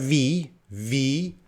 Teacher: my teeth touching my lip ooh you can feel that vibration · if you're making the V sound correctly that vibration is happening it's a voiced sound